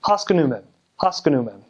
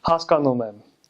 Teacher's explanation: in Armenian every syllable is like equal equal length